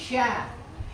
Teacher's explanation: Huruf tengah lidah sya. Ini nggak nempel ke langit-langit, cuma mepet banget. Sangat dekat dengan langit-langit, hampir nempel. Karena hampir nempelnya itulah melahirkan bunyi tapashi.